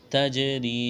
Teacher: جیم پر قلقلہ کریں گے